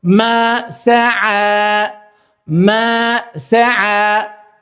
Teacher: siç ju e dëgjoni nëpërmjet artikulimit tim të fjalës, kuptohet qartë që unë e zgjata pra në fund